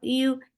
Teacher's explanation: You, yeah, is very soft. You're lifting your middle of your tongue towards palate, but you're not touching it. That is making yeah very soft.